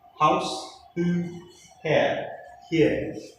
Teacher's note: No air flow with restriction, open glottis. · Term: glottal sound